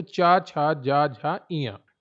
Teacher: च वर्ग आता है तालु में। मुंह का ऊपरी भाग। जब जीभ हमारी ऊपर लगती है और हवा निकलती है